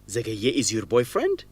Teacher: he confirms by repeating that detail with rising intonation to make it a question